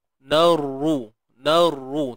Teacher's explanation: Ra baris depan ni confirm-confirm dah tebal. Dan dia bersabdu.